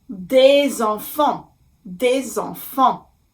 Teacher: imaginary line from the letter S in the word des and attached to the vowel E in the word enfant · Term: liaison